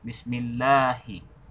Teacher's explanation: karena sebelum nama Allah di situ hurufnya berharakat kasroh, maka nama Allah di situ dibaca tipis. Jadi tidak boleh dibaca tebal.